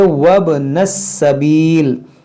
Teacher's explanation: यहाँ पर देखें वब, वाव बा ज़बर वब, ये अलिफ नहीं पढ़ेंगे, जब मिलाकर पढ़ेंगे तो ये अलिफ, ये हमज़ा वसली गिर जाएगा